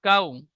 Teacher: ওয়াউলিন নরম আওয়াজে তাড়াতাড়ি পড়তে হয়, টান দেওয়া নিষেধ